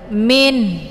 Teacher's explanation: Maka ketika kita waqaf bacaannya tetap makhrajnya dibaca dua-duanya min. Jadi sesudah dibunyikan bunyi nun, bunyi n, kemudian ada tekanan di ujung ada bunyi ha